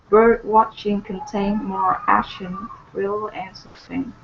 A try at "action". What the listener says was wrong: Okay, get that K in there instead of action. Action.